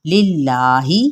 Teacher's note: اس میں جلالہ باریک پڑھیں